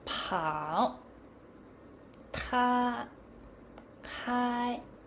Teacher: Initials p, t, k are strongly aspirated.